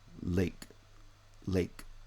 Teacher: a mid front tense vowel right a because it's tense it gets lengthened a bit right